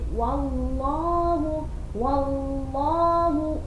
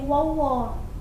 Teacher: wa-nya huruf tipis, sempurnakan dulu baru kita mengucapkan lafaz Allah yang tebal. Jangan wawu-nya ikut tebal jadi wawa.